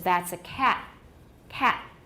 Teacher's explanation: Many people will have a glottal stop at the end of cat